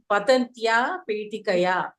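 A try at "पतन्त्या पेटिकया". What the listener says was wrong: పతంత్యా చెప్పాలి, నకారం తీయకూడదు ఇక్కడ. పతంత్యా వినపడలేదు అయితే నాకు, సారీ. పతంత్యా పతంత్యా పేటికయా కరెక్ట్. తృతీయ విభక్తి అడిగారు, కరెక్ట్.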